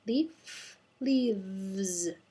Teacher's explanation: make sure the voice is turning on for the v